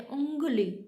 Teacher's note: पीछे से हमारी नोज के पीछे से आवाज़ आ रही है, नासिक से। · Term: अनुनासिका